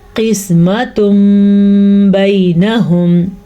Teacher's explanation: نون ساکن یا نون تنوین کے بعد حرف با آ جائے تو نون ساکن یا تنوین میم میں بدل جاتے ہیں، ٹھیک ہے. جب میم میں بدل جاتے ہیں تو وہ میم ہی پڑھا جاتا ہے. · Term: اقلاب